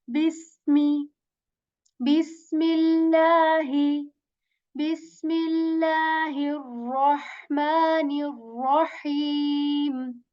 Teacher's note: So this seen letter, just like English letter, kind of S letter with this whistle sound in it when we say bis.